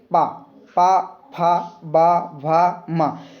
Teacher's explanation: तो जैसे ही आप लोग पा बोलेंगे, पा, पा, फा, बा, भा, मा, तो आपका जो दोनों ओठ है वो ओंठ आपस में बंद हो रहे हैं, इसके बाद खुल रहे हैं